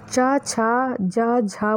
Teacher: चा, छा, जा, झा बोलते समय हमारी जीभ तालु को टच करती है, इसलिए ये तालव्य ध्वनियाँ हैं।